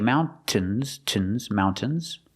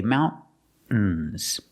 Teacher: Or you can use a stop T and say mountains. Use a stop T, mount, and then you fall to the N.